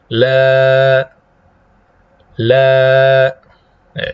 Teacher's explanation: Kalau lamnya itu bunyi karena memisahkan antara lidah dengan langit-langit. Tapi kalau a-nya, alifnya, alif maddiyah yang datang setelahnya itu hanya dari pita suara.